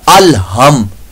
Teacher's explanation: दो चश्मी जो हा होता है हलक के नीचे वाले हिस्से से अदा होता है उसकी आवाज़ निकाल देंगे तो ये आपकी लहने जली बन जाएगी।